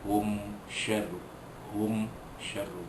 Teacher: Hum syarru, mim mati jumpa dengan shin, hukum dia ialah izhar syafawi, yang wajib menyatakan bunyi mim mati bertemu dengan huruf shin tanpa dengung